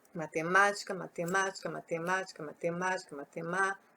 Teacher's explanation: O ma é a sílaba mais forte da palavra matemática. Ma é a sílaba tônica.